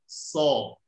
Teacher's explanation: Kalau so pangkal lidahnya naik.